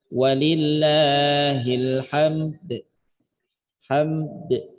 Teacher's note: Model cara bacanya satu dengan isyarah. Isyarat bunyi dal, karena dal dia punya sifat qalqalah, maka cara bacanya juga qalqalah kan.